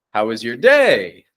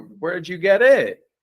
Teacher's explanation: putting that emphasis on the final word in the sentence letting it rise up and down there